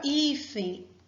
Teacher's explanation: A palavra hífen possui a penúltima sílaba forte.